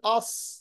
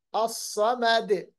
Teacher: साद पढ़ते वक्त मोटाई आ जाती है, आवाज में भी होंठ भी गोल होते हैं और आखिर जो जबान की जड़ है वो भी ऊपर की तरफ उठ जाती है, तो ये बहुत मोटा पड़ा जाता है।